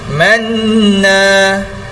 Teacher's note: Kemudian manna, nun yang bersabdu itu hukum dia adalah wajibul ghunnah, wajib dengung. Jadi manna, dia harus berdengung di hidung.